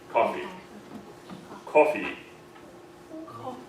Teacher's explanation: in American we want to say the barred I